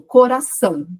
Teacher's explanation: o som ele vai passar por aqui, vai passar meio que pelo nariz para sair. Então ele é um som nasal, ele marca essa nasalização.